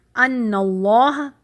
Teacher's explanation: اللہ کے نام کو تفخیم موٹا کر کے ہیوی کر کے پڑھیں گے